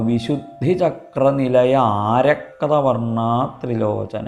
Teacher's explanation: ആ എന്ന് ദീർഘമുണ്ട്, രണ്ട് അകാരത്തിനുള്ള മാത്ര അവിടെ കണക്കാക്കിക്കോളണം